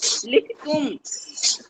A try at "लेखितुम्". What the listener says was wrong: लेखी तुम, लिखी तुम नहीं, लेखी तुम।